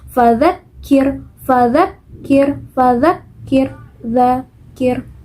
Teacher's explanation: Ketika kita mengucapkan huruf dha, nah itu tidak keluar angin ataupun udara ketika kita mengucapkannya.